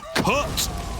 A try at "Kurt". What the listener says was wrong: It's Kurt! You're not saying it right. Kurt. You really gotta get down low with the R, right? Like Kurt.